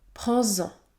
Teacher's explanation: Ou encore, prends-en, prends-en. Le S se prononce Z, Z, prends-en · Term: liaison